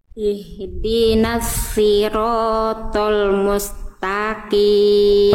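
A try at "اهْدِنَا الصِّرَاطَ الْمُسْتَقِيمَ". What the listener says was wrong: Si huruf lamnya kadarnya terlalu cepat. Jadi karena tempo Bunda lambat, maka L-nya jangan tiba-tiba nyepetin, Bun.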